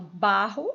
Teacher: quando eu falo Barro a mais forte o bar Então ela é a penúltima · Então, por exemplo, barro, né, tem só 2 sílabas, mas a última é o ro e a penúltima é o ba. E quando eu falo barro, a mais forte é o ba, então ela é a penúltima. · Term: paroxítona